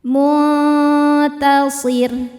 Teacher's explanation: Cara bacanya nun disamarkan ke ta disertai dengungan, namun dengungannya sedikit karena ta makhrajnya dekat dengan nun. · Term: ikhfa hakiki aqrab